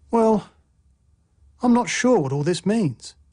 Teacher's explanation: a fall rising tone expresses uncertainty.